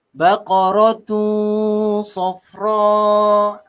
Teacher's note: Mak wajib muttasilah. Perlu pada 4 ataupun 5 harakat.